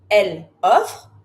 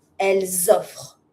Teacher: I know that I make a Z sound because there's a link.